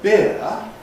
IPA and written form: bɪər (beer)